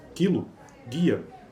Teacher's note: a propriedade de ser anterior da vogal i é compartilhada pela consoante precedente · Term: palatalização de consoantes velares